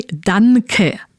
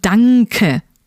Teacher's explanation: Now, as a Spanish person, you may just say danke, but that's not correct. You don't want to pronounce the N sound like at the end of man, but it should sound rather like the sound at the end of ring. So danke, just like thank you.